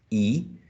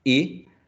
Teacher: And when we say, for example, I, the vowel sounds, sorry, the lips are lax. Tense when we say E, and lax when we say I. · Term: tenseness